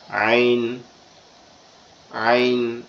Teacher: আইনটা কিভাবে উচ্চারণ হবে, আমাদের গলার মধ্যকান মানে কণ্ঠনালীর মধ্যকান থেকে একটু গলা চেপে ফিসফিস আওয়াজে উচ্চারণ হবে, আইন আইন এরকম ভাবে, ঠিক আছে।